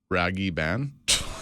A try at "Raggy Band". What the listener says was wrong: roll the R. Roll the R. Raggy Band.